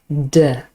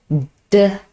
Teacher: It's formed in the same way as t, but you need to use your vocal cords to make the sound voiced. D. Again, there's closure. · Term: plosive d